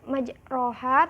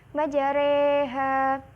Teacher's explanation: Imalah sendiri artinya mencondongkan. Cara membacanya itu mencondongkan harokat fathah ke harokat kasroh, kurang lebih 2/3 harokat. Jadi bacanya bukan majroha tetapi majareha.